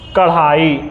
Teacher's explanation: जीभ मुंह के अगले भाग, जिसे हम मूर्धा बोलते हैं, उसे छूकर नीचे गिरे। मुंह के ऊपर भाग के छू के एकदम से नीचे गिरे अगर, तो उसे उत्क्षिप्त व्यंजन बोलेंगे।